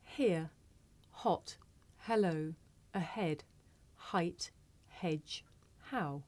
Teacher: This is a voiceless consonant. It makes very little sound because it's really just your breath. You can hear it at the beginning of the word here.